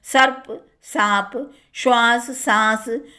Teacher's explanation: प्राचीन श और स तीनों के ही स्थान पर अवधि में सा मिलता है